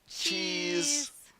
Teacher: this word, with its long E sound, gets the mouth in a smile-like position